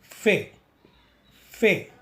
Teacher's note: फे को उच्चारण करने के लिए अपनी ऊपरी वाली सामने वाली दांत अपने नीचे वाली होंठ से लगाएं और फूकें फे, फे, ठीक जैसा हमने चित्र में बताया है।